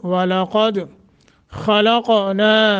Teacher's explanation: खा को मोटा करना है, काफ को मोटा और कलकला।